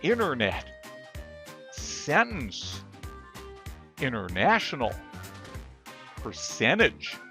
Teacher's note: The T is silent when next to an N preceded by a vowel. With the silent T, the letter T is in the word, but the sound is completely gone.